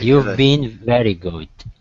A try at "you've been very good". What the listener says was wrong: perfect excellent